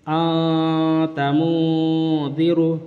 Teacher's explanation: بتایا تنوین یا نون ساکن کے بعد حروف اخفا آئیں تو نون کی آواز کو ناک میں چھپا کر پڑھنا چاہیے